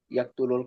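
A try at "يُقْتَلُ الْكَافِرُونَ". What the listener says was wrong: Kok ya? Huruf awalnya harokatnya apa? Yak dulu jadi yuk, yuk talu, yuk talu, itu yuk talul kafiruna, yuk talu al kafiruna, yuk talul kafiruna. Tuh, jadi yuk talu seperti itu.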